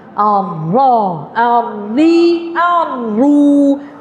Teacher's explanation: Bila dhammah baru muncungkan bibir mulut.